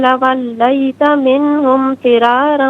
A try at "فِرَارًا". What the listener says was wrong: ذرا میں را کو ذرا کھینچیں گے کیونکہ الف مدہ ہے.